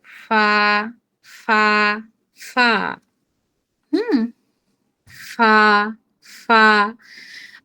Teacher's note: নিচের ঠোঁটের পেট সামনের উপরে দুই দাঁতের আগার সঙ্গে লাগিয়ে উচ্চারিত হয় ফা